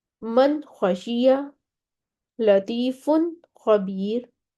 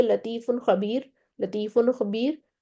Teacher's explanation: फौरन से आपको जुबान जो है वो गाइन और ख्वा के मखरज पर लानी होगी, लेकिन इतने तहम्मुल से लानी होगी कि आपका नून भी ना हिले, इजहार प्रॉपर हो आपका। ठीक है, वो नून अपनी जबर ना ले ले, नून साकिन ही रहे। नून हिलने का मतलब होता है वो ऐसे लगता है सामे को, सुनने वाले को ऐसे लगता है कि आपके नून पर आपने जबर दे दी है।